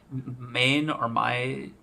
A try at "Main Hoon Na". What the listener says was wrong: Meh. do not pronounce the N. Do not pronounce the N. Meh.